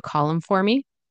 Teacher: in this example we can actually not pronounce the h